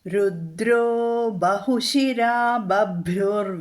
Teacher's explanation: തന്നിരുന്നു അല്ലേ എങ്ങനെയൊക്കെയാണ് ഇത് മാറ്റം വന്നിരിക്കുന്നത് എന്നും പറഞ്ഞു തന്നിരുന്നു രുദ്രഹ ബഹുശിരാഹ അത് രുദ്രോ എന്നായി വിസർഗം മാറിയിട്ട് ഓക്കാരം വന്നു